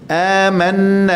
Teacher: nun yang tajdid tu wajibul ghunnah, nun musyaddadah harakatain